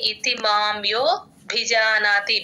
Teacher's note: భి కి మహాప్రాణం ఉంది గమనించండి